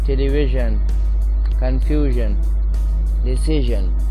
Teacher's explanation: غور سے سنیں کہ نہ یہ پوری طرح سے ی کی آواز ہے اور نہ یہ پوری طرح سے ج کی آواز ہے، بلکہ دونوں کے بیچ کی آواز ہے